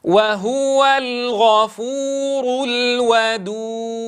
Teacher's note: وهو الغفور الودود. وهو، تنبهوا إلى ضم الهاء هنا، ونقول وهو الغفور، تنبهوا إلى إتمام الحركة، إلى إتمام الضم هنا